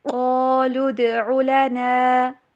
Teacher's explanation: قالوا ادع لنا، قاف اور الف ان دونوں کو پر کر کے پڑھا جائے گا، قا، اور لام کے آگے جو واو اور دو الف نظر آ رہی ہیں ان کے اوپر کوئی سائن آپ کو نظر نہیں آ رہا ہوگا، تو یہاں پہ کوئی بھی ساؤنڈ ان کی پروڈیوس نہیں ہوگی۔ واو الف الف ان کو سکپ کر کے ڈائریکٹلی لام کی آواز کو دال کے ساتھ ملائیں گے